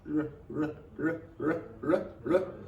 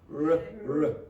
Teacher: the difference is that the R in English does not touch anything. That's not the same as Spanish.